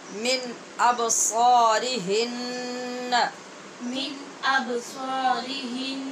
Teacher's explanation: من پہ اظہار ہے، ابصا میں با پہ قلقلہ اور صاد پر ہے، ہن کے نون پہ غنہ ہے